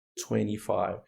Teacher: So 20, when we have this pattern, 20, when we have the letter N, T, and a vowel, right? And that's not the stress, that's not the strongest syllable. You can drop the letter T.